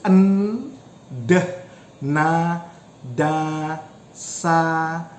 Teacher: So when you produce n, d, na, da, sa, so your tongue is touching your alveolar ridge.